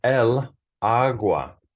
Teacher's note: It actually is feminine, but there's a rule in Spanish that you can't have la before a word that starts with an a, where the emphasis is on that syllable. So agua has the emphasis on a. Therefore, you can't say la agua in Spanish.